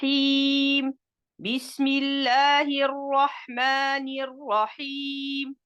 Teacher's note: On a le son I allongé de temps.